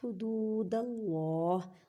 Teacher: اللہ کے لفظ کو موٹا پڑھیں کیونکہ اللہ کے لفظ سے پہلے زبر ہے